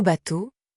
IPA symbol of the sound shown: o